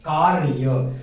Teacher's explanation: अब क्या होता है, ये र सामान्य तौर पर इन दोनों अक्षरों के बीच में प्रयोग किया जा रहा है और वो आधा र है, हम थोड़ा सा ही र का उच्चारण कर रहे हैं, फिर य बोल रहे हैं, कार्य। तो ये जो र है वो आधा र है, न कि पूरा र है।